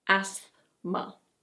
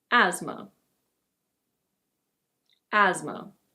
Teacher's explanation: This is not "asTHma". The TH is actually silent. In British English it's: asthma.